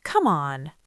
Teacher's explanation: If something annoys you, say, Come on, with a natural drop.